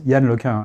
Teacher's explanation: the N is silent or it's nasalized.